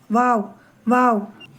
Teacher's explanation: உதடுகளின் இரண்டு ஓரங்களை சேர்த்து வைக்கவும். மத்தியில் சற்று இடைவேலி இருக்க வேண்டும். பற்களை சேர்க்க வேண்டாம்.